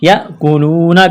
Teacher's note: زبر ہے، ان الذین یاکلون، حمزہ پر جھٹکا دیں گے، یاکلون، کاف کو باریک کرنا ہے، واو ساکن سے پہلے زبر ہے، واو لین ہے، بغیر کھینچ کے پڑھنا ہے